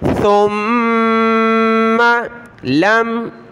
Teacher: میم کے اوپر تشدید ہے تو غنہ کریں گے، ناک میں آواز پیدا کرنی ہے